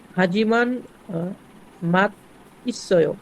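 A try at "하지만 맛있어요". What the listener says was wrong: না, মাত তো আর হবে না। মাত কেন হবে? একটা শিয়ত নিচে থাকবে, একটা শিয়ত উপরে চলে যাবে, আবার নিচে শিয়তের কারণে ত হচ্ছে, তাহলে সে ত উঠে যাবে। তাহলে কি হচ্ছে একটু খেয়াল করেন, এখানে কয়েকটা বিষয় খেয়াল করতে হবে।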